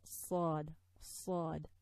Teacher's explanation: So the tongue is sort of behind the front incisors, the upper and lower. So you sort of close your teeth and sad, sad.